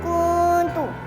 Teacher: Yang ketiga, kuntu hukumnya ikhfa hakiki. Karena nun sukun bertemu dengan huruf kaf dibaca dua harakat.